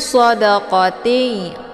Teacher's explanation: Q ini dibaca tebal ya SH juga tebal anginnya lebih jelas